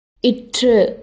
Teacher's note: நாக்கோட நுனி மேலே போய் அன்னத்தோட நுனியை தொடும். இற்று அப்படின்னு சொல்கிறப்ப காற்று வெடித்து வாய் வழியாக வெளியேறும். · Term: நுனி அன்ன ஒலி